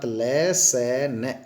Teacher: तो लसन को दांतों से खाते हैं, अर्थात ल, स, न, ये दंत्य है।